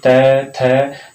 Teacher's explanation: हमारी जो जिह्वा है वो दांतों से स्पर्श होती है। बोल के उच्चारण कर सकते हैं आप, री, त, थ, जो भी अक्षर बोलेंगे तब आपकी जिह्वा जो है दांतों को स्पर्श करेगी। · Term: दंतेय